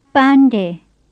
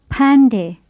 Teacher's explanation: The first of them begins with a plain P, and the second with an aspirated P.